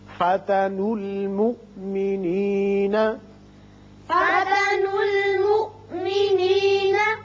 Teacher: یہ آپ کو الف زائدہ نظر آ رہے ہیں. آپ نون کی پیش کو لام سے ملائیں گے اور یہ حمزہ جھٹکے کے ساتھ پڑھیں گے